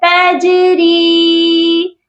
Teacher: جیم حروف قلقلہ ہے اور حروف قلقلہ جب بھی ساکن ہوتے ہیں اس پر قلقلہ لازمی کیا جاتا ہے